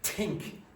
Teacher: Irish people very often remove that H and change that T into an aspirated T. So if you look in linguistics books, you're going to see a little H at the top and it just means like that, more air coming out.